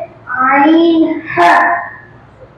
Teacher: মাখরাজ হলকের মধ্যগান হইতে